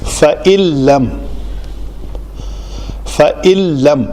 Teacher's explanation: نون کو ہم مکمل طور پر زیرو کر دیں گے، اس کا کوئی بھی حصہ باقی نہیں رہے گا صفات میں یا مخرج کے اعتبار سے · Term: ادغام